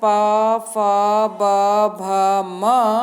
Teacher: पवर्ग के पांचों अक्षर प फ ब भ म इनका उच्चारण स्थान ओष्ठजौ ओष्ठ है